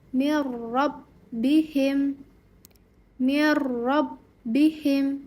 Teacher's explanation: Nah, idgham bila gunah itu adalah meleburkan nun sukun atau tanwin ke huruf sesudahnya tanpa dengung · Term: idgham bila ghunah